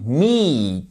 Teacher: j'exagère un peu sur la longueur de la voyelle mais c'est me c'est un il long et en fait c'est